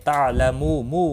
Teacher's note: واو مدہ ہے، ایک الف کے برابر کھینچ کر پڑھیں گے، اور وقف کی صورت میں نون ساکن پڑھا جائے گا، وقف بالاسکان ہوگا، مد العارض وقفی ہوگا، 3 سے 5 الف کے برابر کھینچ کر وقف کریں گے۔